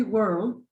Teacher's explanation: World is a schwa with an R